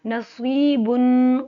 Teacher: ناک میں آواز گئی، غنہ کیا کیونکہ آگے حروف ہلکی نہیں ہے